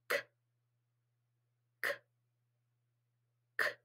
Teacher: so this was the back of my tongue it's kicking the air out so this is an unvoiced back kicker